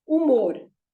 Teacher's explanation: again the H has no sound at all